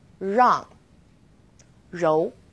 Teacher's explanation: We also have R as in rang or rou. It's quite similar to the R sound in run, but the R is a little softer. So try moving your tongue more to the back of your mouth.